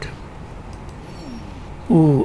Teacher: Oo, of course, is rounded, back, and you can see the height. It is high or close. This is how we describe the primary cardinal vowels number 1, 2, 3, 4, 5, 6, 7, 8.